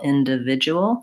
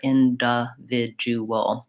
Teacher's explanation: So in individual, the d in the di syllable is also reduced. So in is the stress syllable, individual, and I use the schwa there, individual. Oftentimes the reduced vowel is either a schwa, the as you were indicating, or it's vowel I.